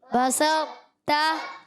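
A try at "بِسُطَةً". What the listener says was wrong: طا کو اور موٹا کر بصوت تا.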